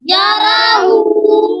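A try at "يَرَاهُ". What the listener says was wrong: ہاں یاراہو یا پر زبر ہے را پر زبر ہے حرکت ہے لمبا نہیں کرنا. یاراہو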